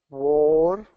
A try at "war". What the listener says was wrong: Okay, a little bit of a roll there. War. Okay, and what might help is, let's link it. So will the car start? Kind of link it together.